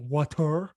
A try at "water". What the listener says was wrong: Yeah, because there's a T in it, not a D, and there's no U either. Water. Yeah, no, there's other letters in that word that you're not pronouncing correctly.